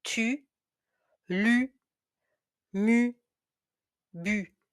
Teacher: So, rounded lips, tongue forward.